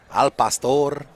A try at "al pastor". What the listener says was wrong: Don't say al pastor. Nobody rolls the R when you say al pastor.